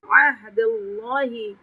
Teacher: لام جلالہ سے پہلے زبر آ رہا ہے تو اس لام پہ تفخیم کریں گے